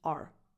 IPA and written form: ɑr (our)